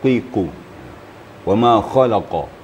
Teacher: Ini qafnya sedikit ketipisan tadi. Oleh sebab itu tebalkan lagi.